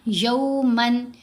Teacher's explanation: या की आवाज वाव की तरफ पूरी तरह टिल्ट करेगी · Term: वाऊ लीन